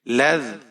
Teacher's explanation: یہاں پر لام کے اوپر زبر ہے، ذال ساکن ہے، لام کو ذال کے ساتھ ملائیں گے، ذال کو نرمی کے ساتھ پڑھیں گے